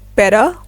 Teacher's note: In American English, we say better with a soft T sound and an R sound at the end